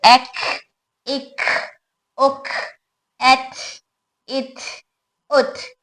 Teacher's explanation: सिफत शिद्दा के साथ सिफत हमस है, इसलिए इनकी हवा की आवाज ज्यादा वाज़ेह होगी